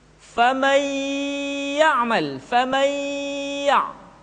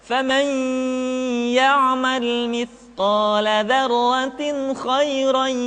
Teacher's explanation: masukkan ke hidung, karena gunnah tempat keluarnya adalah al-khayshum atau rongga hidung